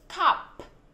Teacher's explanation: Con khạc hơi mạnh cái âm k cho cô, chứ không phải là cắp cắp